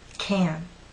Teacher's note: The stressed can makes you pull your lips out, and your tongue is rather flat and pushed forward. Can. When it's unstressed, using this first pronunciation, your lips are slightly more relaxed, but your tongue is still flat and pushed forward.